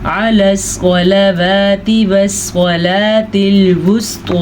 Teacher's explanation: سواد پر پڑھنے ہیں اور توا بھی پر پڑھنی ہے کیونکہ یہ حروف پر پڑھے جانے والے حروف ہیں